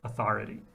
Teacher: So this is the O becoming the bother vowel in an accented syllable before RV or a double R.